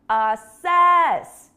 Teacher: do you hear how the stress is on the second syllable I make the second part of the word long longer and louder